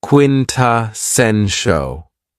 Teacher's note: this word has four syllables and the stress is on the third syllable.